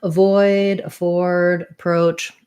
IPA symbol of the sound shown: ə